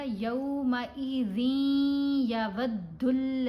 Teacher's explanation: इनकी पहचान ये है कि ये नून साकिन या नून तनवीन के बाद जब आते हैं तो मुशद्दद होते हैं और इनको अदा करते हुए हमने नून की आवाज़ को साइलेंट पढ़ना है।